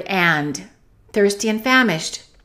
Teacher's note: we can eliminate that D in the word and